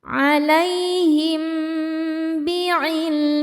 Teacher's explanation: Selanjutnya ada hukum ikhfa syafawi. Karena mim sukun menghadapi huruf ba. Dibacanya berdengung.